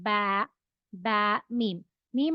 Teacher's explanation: ब दो लिप्स हम मिलाएंगे ब ब मीम मीम और बा का एक ही मखर है